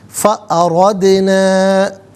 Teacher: دال ساکن ہے لیکن دال قلقلہ ہے تو آواز لوٹتی ہوئی محسوس ہونی چاہیے